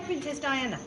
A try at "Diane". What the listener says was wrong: Without the A on the end. It's just Anne, not Anna.